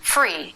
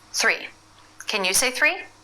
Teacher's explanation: for the unvoiced th the tongue tip must come through the teeth it's just the very tip